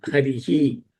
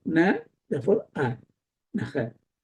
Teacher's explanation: See, naha is a visargam. In Sanskritam, when you finish with the two dots, you say naha. Harihi. It takes the swara from the previous word.